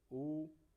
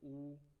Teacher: ओष्ठों की स्थिति वर्तुलाकार लगभग वृत्त के समान, कैसी? वृत्त के समान हो जाती है, वर्तुल या व्रतमुखी स्वर कहलाते हैं।